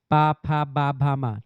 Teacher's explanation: यह ओठ से निकलता है। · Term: ओष्ठ